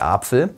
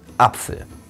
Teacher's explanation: Dann beginnt der deutsche Sprecher häufig mit einem Knacklaut.